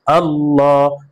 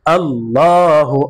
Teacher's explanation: আল্লাহ শব্দের লামের পূর্বে জবর আসছে এই কারণে আল্লাহ শব্দের লামকে পুর করে পড়তে হবে অর্থাৎ মোটা করে পড়তে হবে